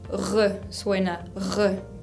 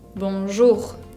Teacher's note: Por ejemplo, la primera consonante que es distinta es la R, como les decía en la introducción. Esa R es bien característica del francés y viene del fondo de la garganta. No se hace con la lengua como en el castellano, sino que con la garganta. Tengo que hacer como si estaría haciendo gárgaras o rascándome la garganta o haciendo un rugido.